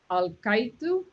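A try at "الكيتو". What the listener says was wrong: For some reason, you don't say al, you say all. No, you have to say all sometimes when you say Allah. All right, but not always. Like nahal. Sometimes it's like that. Sometimes just like Paul thing. Al-Qaitu.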